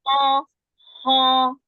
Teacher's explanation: Kho itu makhrajnya di akar lidah. Jadi dia paling dekat dengan huruf qaf makhrajnya.